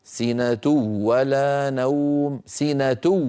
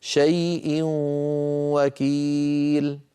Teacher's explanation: انظروا إلى الأمثلة: لا تأخذه سنة ولا نوم، سنة إذن التنوين في سنة متتابع، ولا الواو عليها حركة وليس عليها شدة. هذا دليل على أن النون يعني التنوين بقي جزء منه لم يدغم، وهو الغنة. سنة ولا، لو وضعنا فوق الواو شدة لصار النطق سنة ولا نوم، سنة ولكننا لم نضع شدة لأنه إدغام ناقص، هو إدغام بغنة.